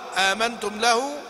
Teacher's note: يقرأ بهمزة واحدة بإسقاطه الهمزة الأولى، همزة الاستفهام